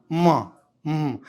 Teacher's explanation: कुछ हवा नाक से फेंकना चाहिए तभी होगा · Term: अनुनासिका वर्ण